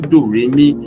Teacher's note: Do is low, re is mid, mi is high.